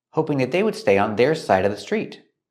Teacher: We see the D at the end of would. It's a stop D. Stop the air. Don't release the D.